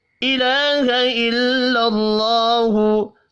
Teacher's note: الہ الا اللہ، لام کے اوپر کھڑی زبر ہے، ایک الف کے برابر کھینچ کر پڑھنا ہے، اللہ کا نام زبر کی وجہ سے پر پڑھا جائے گا